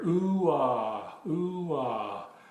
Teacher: In the beginning of these vocals, you'll hear an oo phoneme, as in boot, oo. and it transitions into an ah phoneme, as in father. So ooh ah, you can hear that plainly in these last two vocalizations. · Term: two distinct phonemes